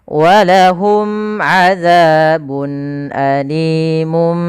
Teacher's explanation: Yaitu izhar jelas, halq berarti hurufnya setelahnya adalah huruf-huruf yang keluar dari tenggorokan. Maka di sini ada tanwin berupa bun ketemu alif, maka harus jelas. Jangan azabun alim. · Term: izhar halqi